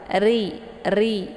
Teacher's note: Di sini ri-nya ada getarannya karena sifat ra ini adalah takrir.